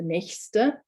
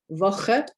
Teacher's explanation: so nächste is a softer ch sound. Woche being a harder ch sound.